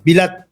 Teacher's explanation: iba ang bigkas yung emphasis nasa first syllable